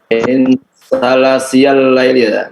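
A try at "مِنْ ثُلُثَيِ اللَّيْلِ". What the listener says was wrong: Min sulusayil laili. Itu sulus ya, bukan ini. Sulus al-lail. Sa juga. Intinya adalah posisi daripada letak lisan kita itu memang harus betul-betul di situ. Ya, sa.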